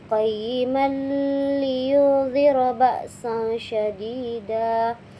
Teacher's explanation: tanwinnya bertemu dengan huruf lam dilebur tanpa didengungkan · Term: idgham bila gunnah